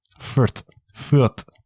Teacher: in Deutsch they don't make the th sound